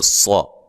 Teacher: صاد موٹے حروف میں سے ہے، لہذا اس کو موٹا کر کے پڑھنا ہے